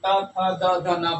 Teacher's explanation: इस वर्ण को बोलने पर जीहवा हमारे दांतों को स्पर्श करती है। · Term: दंत वर्ण